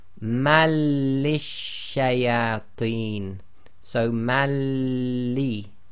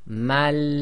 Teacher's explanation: So the assimilation takes place without nasalization. So it's just mal.